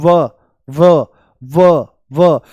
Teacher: इसके उच्चारण में दांत होठों को स्पर्श करते हैं। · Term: दंत्य ओष्ठ